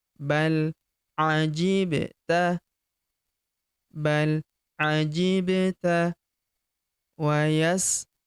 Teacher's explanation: Huruf ba berharokat sukun kita pantulkan atau kita qalqalahkan.